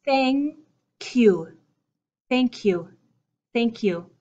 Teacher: that end of my first word pushes into the beginning of the second word